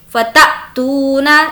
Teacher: حمزہ اس پر جب ساکن ہو تو اس کے پڑھنے میں جھٹکا ہوتا ہے